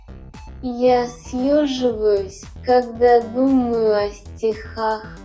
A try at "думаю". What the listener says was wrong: 자, 드마유라는 말이요. 드무아 이렇게 돼버리네요. 으 발음이 붙어버리는데. 뭐좀 이상하다. 드무아 이렇게 돼버리네요.